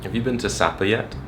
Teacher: He had a very steady rise.